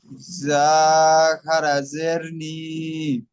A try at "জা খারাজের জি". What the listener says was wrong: যা খারাজের নি হয় না, যা খারাজের জি।